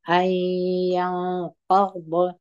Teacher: ستاسو ته پام دغه نون په دغه یا کې ګډ سوی دی، مدغم سوی دی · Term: ادغام